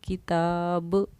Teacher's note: یہاں با کی آواز ہماری لوٹی ہے کیونکہ با پر ہم نے جزم دے کر سانس توڑا ہے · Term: قلقلہ